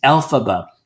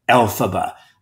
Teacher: alphaba stresses on the first syllable